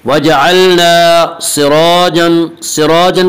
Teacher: इसका कायदा यह है कि रा के ऊपर ज़बर और पेश आए तो रा को पुर पढ़ेंगे, रा के नीचे ज़ेर आए तो रा को बारीक पढ़ेंगे। सिराजा के रा के ऊपर ज़बर है इसी रा को पुर पढ़ेंगे।